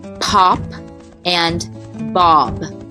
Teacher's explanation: a bilabial that means both lips are working together to make this sound you have both voiced and voiceless sounds